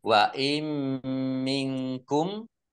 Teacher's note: Nun tasdid dibaca gunah atau mendengung ditahan dua harakat biar tampak dengungannya